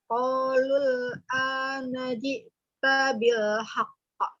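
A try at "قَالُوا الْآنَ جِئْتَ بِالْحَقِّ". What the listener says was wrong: Hati-hati, huruf ta hanya satu harokat. Qalul anajita bil haqq.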